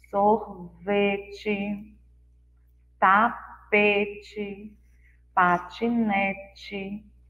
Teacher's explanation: Já as primeiras palavras, que a Pró destacou as letras E em azul, lembra um som de I, mas brando, assim, mais fraquinho.